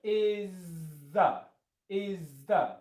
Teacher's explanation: it's basically going to sound like a long Z sound.